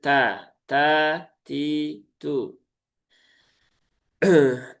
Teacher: Pastikan dia tetap keluar sifat hamsnya baik dalam kondisi harakat maupun sukun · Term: huruf ta